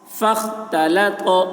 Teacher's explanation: تو کی آواز موٹی ہو رہی ہے